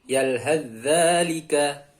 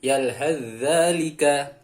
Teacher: Cara membacanya, huruf ta sukun tidak dibaca langsung masuk ke huruf zal yang bertasdid. Jadi huruf ta-nya hilang.